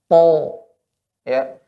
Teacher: Ujung lidah bertemu dengan pangkal gigi seri atas.